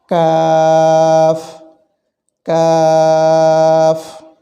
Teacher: চার আলিফ দীর্ঘ করে উচ্চারণ করা হয়